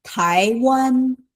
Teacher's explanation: is second tone and first tone